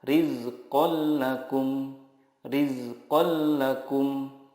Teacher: Idgham bila gunnah adalah nun sukun atau tanwin bertemu dengan lam atau ro. Cara membacanya, meleburkan nun sukun ke huruf berikutnya tanpa gunnah. Contohnya, tanwin bertemu lam, rizqal lakum.